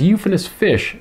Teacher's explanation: The phrase euphonous fish is an example of consonance because the F sound repeats from word to word, even though the sound doesn't necessarily repeat in the same spot in both words